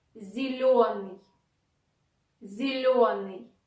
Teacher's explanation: Ye after ze is not stressed. Don't even try to pronounce it like ye. It is e, closer to e.